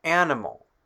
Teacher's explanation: The consonant m in the word animal makes our second a in the word sound like ah.